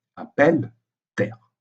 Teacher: la prononciation du E qui précède la double consonne est un E ouvert